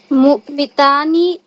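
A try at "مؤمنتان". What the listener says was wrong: मुमिन, नून खा रही है भाई, तू नून खा रही है। मुमिनतानी।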